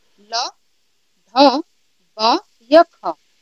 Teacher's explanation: आपने एक चीज नोटिस की होगी कि आपने ल बोला तो दोनों होठ खुले रहे, आपने ध बोला तो दोनों होठ खुले रहे, आपने ख बोला तो दोनों होठ इसमें भी खुले रहे, तीनों ऑप्शन आपके क्या हो गए, ये तो कट गए, बचा क्या, ब। तो जब आप ब को बोलते हैं तो आपके दोनों होठ क्या हो जाते हैं, आपस में मिल जाते हैं